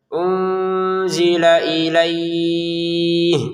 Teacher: Unzila dibaca dengan samar, lamnya langsung ke hamzah ya.